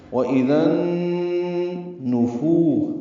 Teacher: وَإِذَا النُّفُو، معروف طریقے سے نون اور فا کو پڑھیں گے، نون کو جلدی پڑھنا ہے اور فو واو مدہ ہے 2 حرکات لمبا کرنا ہے۔ اسی طرح سین اور زا بھی معروف طریقے سے ادا کریں گے، زا کو واو سے ملانا بھی ہے۔ · ذال کو نون سے ملاتے ہوئے ادغام شمسی ہوگا اور نون مشدد ہے اس لیے غنہ ہوگا